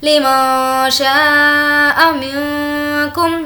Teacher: لمن شاء منکم یہاں پر بھی اخفا کریں گے نون کی آواز کو ناک میں چھپائیں گے کیونکہ کاف حرف اخفا کے لیٹرز میں سے ہے. منکم یہاں پر اظہار شفوی کا مطلب یہ ہے کہ میم ساکن کے بعد با اور میم کو چھوڑ کر کوئی اور لیٹر آئے تو وہاں پر ہم اظہار کر کے بالکل نارمل پڑھیں گے.